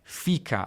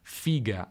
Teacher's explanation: Al contrario, il termine per l'organo femminile, fica al centro-sud, figa al nord, con sonorizzazione